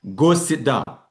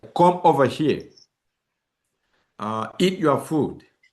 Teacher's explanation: You see that my tone is going to fall at the end of the sentence. · the pitch will jump up slightly, then falls on the last word in a sentence. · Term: falling intonation